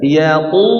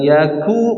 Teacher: Yaquluna inna lamardudu ya kan ya gitu, makanya harus tebalkan diangkat ke atas ya, karena makhrajnya di mana, huruf qaf makhrajnya mana, pangkal lidah bagian atas.